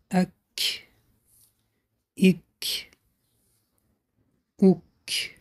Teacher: هنگام حرف کف با ساکن بودن هوا را به بیرون خارج می کنیم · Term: صفت حمس